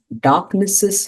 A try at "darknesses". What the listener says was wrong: when you have that mark over the word darkness, you cannot pronounce it in the plural.